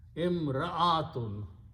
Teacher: So you have to pronounce ra and hamza separately.